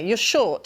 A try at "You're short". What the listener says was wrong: Not short, but get a hard R in there. Short. There's never an R that you're going to make too hard.